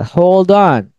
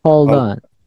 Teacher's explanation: konsonannya di hold bertemu dengan vowelnya on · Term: disambung